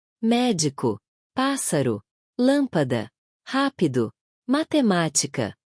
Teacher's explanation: Nas palavras proparoxítonas, a sílaba tônica é a antipenúltima sílaba.